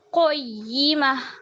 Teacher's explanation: اس کو پڑھیے اور قاف کو موٹا کیجیے